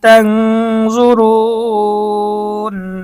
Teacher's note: তাং, তা নুন জবর তাং, এখানেও ইকফার গুন্না, নুন সাকিনের পরে ইকফার হরফ জ এসেছে, গুন্না সহ পড়তে হবে। তাং জ পেশ জু, র ওয়াও পেশ রু, নুন জবর না, তাং জুরুন। · তাং জ পেশ জু, র ওয়াও পেশ রু, নুন জবর না, তাং জুরুন। এখানে মদের হরফের পরে ওয়াকফ করার কারণে মধ্যে আরজি 3 আলিফ টানতে হবে।